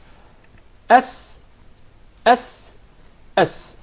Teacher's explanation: the letter Sin comes from the tip of the tongue, and the palates of the two front top incisors. S, S, S.